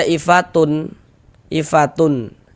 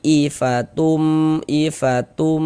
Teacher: Kemudian cara membacanya juga disertai dengan gunnah, disertai dengan dengungan. Jadi ini kita baca ifatum, tum masuk melebur ke huruf mim. Jangan dibaca ifatun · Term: idgham bi gunnah